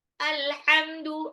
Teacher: Yang benar itu alhamdu ya, pakai ha tipis, tenggorokan tengah.